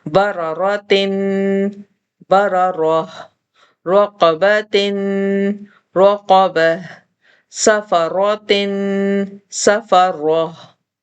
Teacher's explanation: तीसरी चीज, गोल ता के बारे में पहले भी बताया था कि जब हम इसको रवां पढ़ते हैं तो इसको ता के साउंड से पढ़ते हैं, लेकिन जब हम इस पर वफ करते हैं तो हम इसको हा का साउंड देते हैं जो सीने की तरफ से आता है